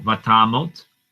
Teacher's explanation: Okay, now vatamot. Now notice I say tamot with an O sound. Stress is on ta, and then this syllable right here ends with the consonant, and it's not the stressed syllable, so this makes an O sound.